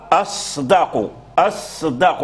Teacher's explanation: اذا كان الصاد ساكنا مع الدال الصاد مهموس والدال مجهور اذا اللسان اللسان يميل الى ماذا يميل الى ان يجعل الصاد · لابد للانسان ان يبين الصاد الصاد وان يخلصها من الزاي يخلص من الزاي لان كما ذكرنا الدال الزاي اقرب الى الدال